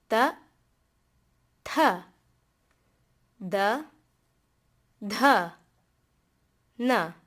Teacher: Then we have the dentals. To make these sounds, you take the tip of your tongue, place them behind the upper two incisors.